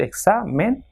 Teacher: So it has got 2 syllables, examen. So the second last will be stressed, that is exa.